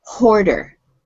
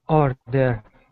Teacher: When they speak English, they like to put an H on words that start with a vowel.